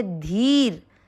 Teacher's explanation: धी की मात्रा बड़ी लंबा खींचते हुए आधे र को पढ़ेंगे